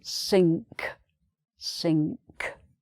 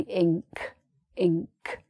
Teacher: it's ng in your throat with a k added